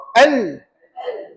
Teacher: Tapi kena sebelah tepi ni. Tepi hujung lidah kiri atau kanan dilengkungkan ke gusi hadapan sebelah atas. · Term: inhiraf